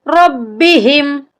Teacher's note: با کے اوپر شد ہے، را کو با کے ساتھ جب ملائیں گے تو اس کو ہم سختی سے پڑھیں گے.